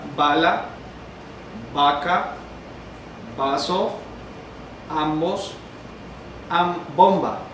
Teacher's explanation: La segunda es oclusiva bilabial sonora con aire pulmonar agresivo. Entonces la diferencia es que la primera es sorda, la segunda es sonora.